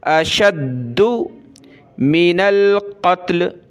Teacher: دال کے اوپر یہ تشدید ہے، اس کی وجہ سے دال کو سخت کریں گے